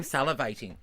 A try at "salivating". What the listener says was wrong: And the way you're saying salivating is weird. You're using every syllable.